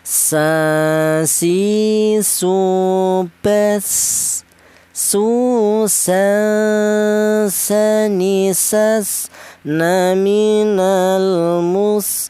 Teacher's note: sin ujung lidah menyentuh pangkal gigi seri bawah